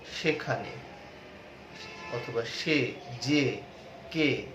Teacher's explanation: সংবৃত উচ্চারণের সময় এ কারের মতো উচ্চারিত হয়